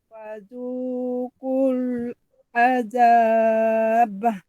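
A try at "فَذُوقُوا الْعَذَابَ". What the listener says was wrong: Azab. Jangan bah. Jangan bariskan ba. Azab.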